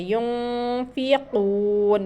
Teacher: नून के ऊपर साकिन है और फ़ा, इख़फ़ा में से फ़ा आ गया है तो यहाँ पर इख़फ़ा करके पढ़ेंगे